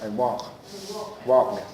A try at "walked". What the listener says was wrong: Yeah, there's a tiny little D sound at the end. I walked. but it's not walked. Walked. It's a little bit quieter. It sounds like a T. It sounds like a T. Walked. Walked. Yeah, walked. I walked.